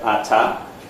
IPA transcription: ɑtɑ